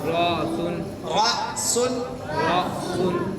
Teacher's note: ये हमजा के बाद जज़म है झटका होगा